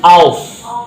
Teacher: jangan as tapi aus ya, agak monyong sedikit ya, karena ini adalah sod ya, beda ya, sama sin. Ashabu sama aushabu beda ya.